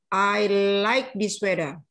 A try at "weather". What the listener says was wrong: I like this weather. Weather. Well, bukan D, tapi agak gimana ya? Weather. Kata TH dalam U. Weather. Weather. Buka D-nya itu lebih lembut. Jangan terlalu.